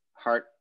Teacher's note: you get an unreleased t so the t is just heart it just doesn't get released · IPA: [hɑr]